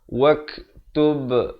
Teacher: wak ada bunyi angin itu, bunyi hamas itu. Kemudian tub ada lantunan.